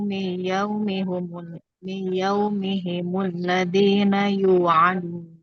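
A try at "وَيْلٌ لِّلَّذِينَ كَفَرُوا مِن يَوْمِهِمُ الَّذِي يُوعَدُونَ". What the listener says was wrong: Ladzi nggak pakai na ya Bu?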